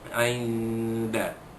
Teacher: nun mati jumpa dengan dal, hukumnya ikhfa hakiki, menyembunyikan bunyi nun mati yang bertemu dengan huruf dal dengan berserta dengung